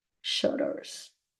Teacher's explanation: Pretty much you have the two T's there, but it's like it has a R sound.